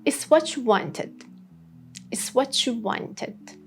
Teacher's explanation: When there is T plus Y sound, especially in you or your. These T and Y sounds would mix and become ch. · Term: ch sound